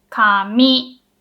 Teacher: the first mora is pronounced with a low pitch the second mora has to be pronounced with a high pitch · for paper and hair we say kami it's lo hi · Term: pitch accent